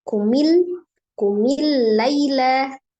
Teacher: Jadi ada lam sukun, kemudian lam ketemu dengan lam ya, fathah. Jadi alif lam syamsiyah, maka dia diidghamkan lam.